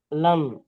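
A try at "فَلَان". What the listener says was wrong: লান নয়, লা, লা গণ্য করতে হবে। টান দিতে হবে না ভাই, টান দিচ্ছেন লান বলে টান দিচ্ছেন কেন? লান, আওয়াজকে চেপে ধরে রাখতে হবে নাকের মধ্যে, লান।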